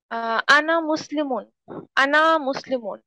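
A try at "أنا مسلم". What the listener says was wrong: আনাতে টান নাই, হ্যাঁ আনা টানা মানা বলেন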